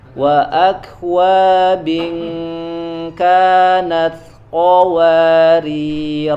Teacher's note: Jadi dibaca alifnya ketika sukun, tetapi ketika ketika wasol ya, ketika wasol tetap dianggapnya tidak ada, hanya dibaca ketika waqaf saja. Ketika wasol, misalkan di wasol, maka ro-nya dibaca pendek ya.